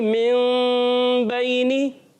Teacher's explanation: کیا اقلاب کی معنی ہے بدلنا. نون ساکن تنوین کو میم سے بدل کر اخفا کر پڑھتے ہیں